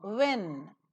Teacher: So the diagrammatic representation for the labio-velar semivowel were is that the glide begins at the position of U, which is back, just above the half closed position, rounded, and moves to the immediately next vowel that is present in the example.